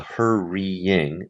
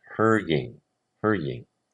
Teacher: So we're going to take out the hoor-ee-ing and make it hoor-ing, hoor-ing. Squish it together. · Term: compressing